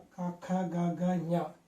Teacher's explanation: కంఠం దగ్గరలో ఈ యొక్క నాలుక అలాగే కొండ నాలుక వీటిని ఉపయోగించి మనం కంఠం దగ్గరలో బాగా పలకడానికి ప్రయత్నం చేస్తున్నాం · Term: కంఠ్యములు